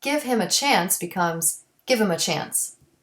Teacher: delete the H and he his him and her when the words are unstressed